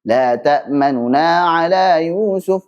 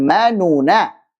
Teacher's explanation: Ma jelas, nunya cepat dan suaranya lebih rendah, kemudian ngegas, nanya jelas lagi. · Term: ikhtilas